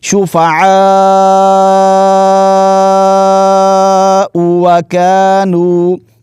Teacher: کھڑا زبر کو یہاں پر جو مد ہے مد متصل اس کو کھینچنا ہے اور حمزہ کو آپ نے نہیں کھینچنا۔